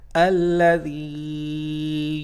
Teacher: So whenever you have this situation in the Quran, I mean sakoon on the last letter, sakoon on ya and kasra below the previous letter, then it's going to be a ya madda, and we should stretch it for a second.